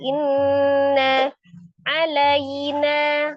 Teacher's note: Inna, ada nun tasdid, nun musaddadah ya, wajibul ghunnah, akmal matakun, paling sempurna 2-3 harakat, ditekan dan ditahan di suara yang dimasukkan ke rongga hidung.